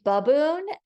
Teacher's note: You could also say baboon, and then the A is making a schwa sound, and that's fine too, still spelled with an A.